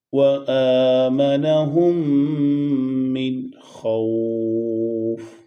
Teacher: من کے نون ساکن پہ غنہ نہیں ہوگا کیونکہ بعد میں حروف حلقی میں سے خو آ رہا ہے